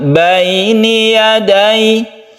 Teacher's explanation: Karena sukun ya itu menjadi huruf i, bukan e. Bukan baini yadaihi, tapi yadai, i membentuk huruf i. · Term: mat lin